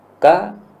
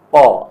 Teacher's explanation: ka itu lebih maju, qa lebih dalam lagi